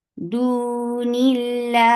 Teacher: This temporary sukoon has turned this two counts long vowel into four. So make it four counts long.